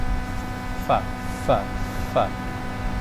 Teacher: Bibir bertemu dengan dua gigi seri.